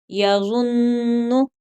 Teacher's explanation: यहाँ सख्ती के साथ साथ नून के ऊपर गुन्ना भी होगा, जैसा कि हमने कायदा नंबर 1 पढ़ा था कि जब नून और मीम मुशद्दद हों तो वहाँ पर गुन्ना होगा।